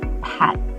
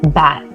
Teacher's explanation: If you say the letter P as in pat, your voice doesn't vibrate. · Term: unvoiced